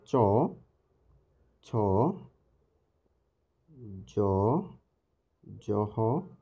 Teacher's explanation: তালব্য বর্ণ অর্থাৎ তালুর সাথে স্পর্শ করে যে বর্ণগুলো উচ্চারণ হয়